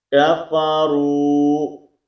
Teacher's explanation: اس کے بعد یہ یا مدہ موجود ہے، اس کو ایک الف کی مقدار کے اندر کھینچ کر پڑھیں گے، نلذین، ٹھیک ہے۔ کفروا، یہ واو مدہ ہے، اس کو ایک الف کی مقدار کے اندر کھینچیں گے